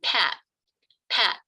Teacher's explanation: I'm not releasing the /t/. There's no flick of the tongue there. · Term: allophone of /t/